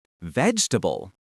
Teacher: That middle e sound virtually disappears and the a becomes a softwah sound. Try emphasizing the first syllable and swallowing the rest of the word. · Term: syllable reduction